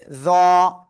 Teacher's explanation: ওকে, এরপরে জ অক্ষরটা আপনার শুরুতে মানে পূর্ণরূপে এটা আসবে জ, জিহ্বার আগা সামনের উপরে দুই দাঁতের আগায় লাগিয়ে মোটা আওয়াজে উচ্চারণ করতে হবে।